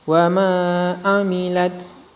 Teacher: Cara membacanya dipajak panjang 2 harokat. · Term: mad tabi'i